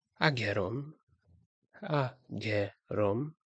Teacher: The second one has a aspirated G sound and it's pronounced ageron, ageron.